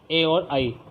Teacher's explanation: ये दोनों कंठ तालव्य के अंतर्गत आएंगे, इसलिए ये इनका उच्चारण स्थान कहलाएगा कंठ तालव्य